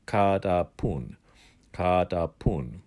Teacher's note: The T is not highly aspirated, which means it's not very explosive.